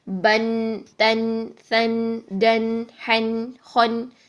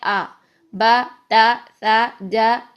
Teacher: زبر تنوین ہوتی ہے اس کے لاسٹ میں جو آواز آتی ہے نا، ساؤنڈ ہوتی ہے، یہ نون ساکن کی ساؤنڈ ہوتی ہے